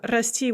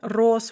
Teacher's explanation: the ah in the infinitive turns to o in the past tense